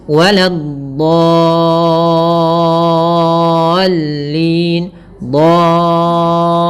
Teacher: Caranya adalah kita memanjangkan dotnya dulu sepanjang 6 harakat, baru masukkan ke lam, ada sedikit nabernya. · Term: mad lazim kalimi mutsaqqal